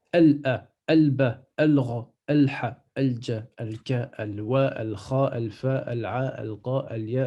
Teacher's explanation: je rajoute le soukoun dans le lem et je prononce le lem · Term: lettres lunaires